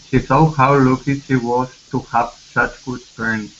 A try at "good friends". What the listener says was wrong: Here instead of good friends, open your mouth. Good, good friends. Good. Yeah, to have such good friends. Let's go to the word thought right here instead of thought. This is an ah sound. The word is thought. She thought.